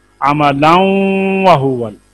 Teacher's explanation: नून साकिन और नून तनवीन के बाद हरूफ यरमलून में से कोई हर्फ आ जाए तो नून साकिन और तनवीन को उनमें मिलाकर इदगाम के साथ पढ़ते हैं। तनवीन का इदगाम वाव में गुन्ना के साथ होगा